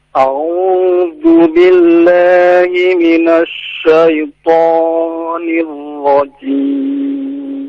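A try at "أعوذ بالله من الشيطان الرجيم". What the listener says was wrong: Tadi a'udzu billah, tidak dipanjangkan dari 2 harokat. Tidak a'udzu billah, itu melebihi dari 2 harokat ya. A'udzu billahi minasy syaithanir rajim.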